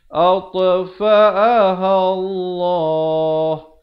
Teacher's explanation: ha bila datang sebelum perkataan Allah baris atas baca tebal